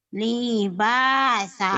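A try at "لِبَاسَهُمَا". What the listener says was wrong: liba. Linya pendek. Libasahuma gitu. Libasahuma liyuriyahuma.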